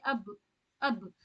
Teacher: जब जज्म लग जाती है ना तो इसमें झटका झटका सा साउंड आएगा, जैसे अब हमजा बा जबर अब।